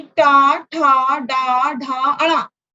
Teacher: आपकी जिह्वा पीछे जाकर मूर्धा को छूती है, यानी टा, ठा, डा, ढा, अड़ा। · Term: मूर्धन्य